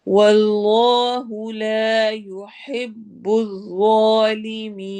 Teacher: اس میں جلالہ کی لام کو موٹا کریں گے